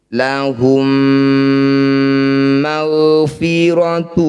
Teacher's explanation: Rabbahum bil ghaibi lahum ma, mim sukun bertemu mim disebut bacaan idgham mimi atau idgham mitsli. Bunyi mim pertama masukkan pada mim kedua, kemudian dengungkan 2 harokat dengan merapatkan bibir.